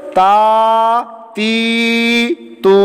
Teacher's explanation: एक अलिफ लंबा करके, एक अलिफ खींच के, एक अलिफ यानी 2 हरकत के बराबर इसको लंबा करके पढ़ना है